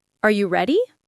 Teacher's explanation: Voice goes up at the end. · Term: rising intonation